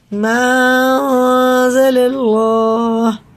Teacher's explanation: اللہ کا لام پورے ہے، زبر کے ساتھ ہے تو منہ بھر کے موٹا کر کے پڑھیں گے